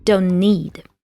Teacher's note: in this word chunk don't need we drop the T sound and Link the two words